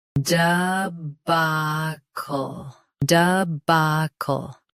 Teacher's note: Stress, ba. Keep duh soft and end with cl clearly.